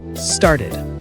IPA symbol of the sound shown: ɪd